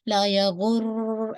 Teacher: रॉ पे बहुत तकरार नहीं कीजिएगा, ला या गुर ऐसे करके ना, यानी मुसलसल तकरार नहीं, बस एक ही दफा अगर हो गई तो ठीक है, लेकिन ये कि कोशिश कीजिएगा कि तकरार को बार बार होने से इसको रोकेगा, ठीक है।